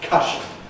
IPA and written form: ˈkʌʃn̩ (cushion)